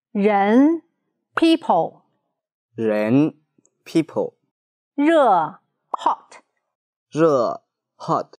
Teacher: Remember, the tip of the pen cannot touch the upper gum, and it should not move. 日 The shape of your mouth is the same as sh, but raise your tongue and the vocal cords vibrate.